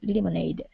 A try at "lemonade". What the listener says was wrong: Now, one thing here, instead of lemonade, it's le, short E sound, lemonade.